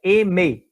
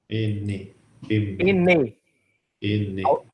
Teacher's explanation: o M é uma consoante labial, porque eu uso o lábio para falar